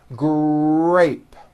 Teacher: the R sound is stronger and you even hear it more than the G sound. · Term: R blends